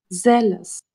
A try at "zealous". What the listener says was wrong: Yes.